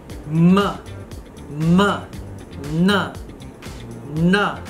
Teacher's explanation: we can release the sound with the nasal cavity open so it comes out through the nose